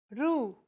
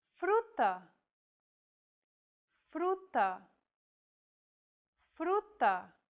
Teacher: This trill sound is done by lightly tapping the gum ridge behind your upper teeth with the tip of your tongue. It should be a quick, striking motion, similar to the sensation you get when pronouncing the T in words like butter, cutter, and so on.